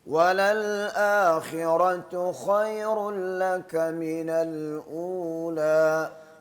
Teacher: را کو پر کرے جیسے قاری صاحب نے پڑھایا ہے آخراتو میں